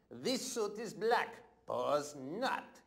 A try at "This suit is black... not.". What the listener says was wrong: No. You don't say pause. This suit is black. That's a pause. Not.